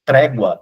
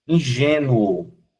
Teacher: Ele sai do menos para o mais. Então esse é um ditongo crescente.